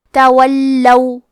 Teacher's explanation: کلمت تولو میں حرف اللام پہ تشدید ہے تو ہم 2 حرف کے برابر لام کو پڑھیں گے اور کیونکہ تشدید زبر کا ہے تو ہمیں زبر کو ظاہر کرنا ہے.